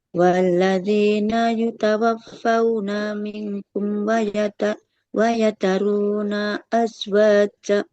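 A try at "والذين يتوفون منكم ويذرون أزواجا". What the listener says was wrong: Panjang pendeknya nah. Ini ya kadang paling sering kejadian itu kita memanjangkan huruf yang di akhir-akhir kata. Walladzina yutawaffawna. Nah, jangan dibawa nada jadi panjang ya. Hati-hati.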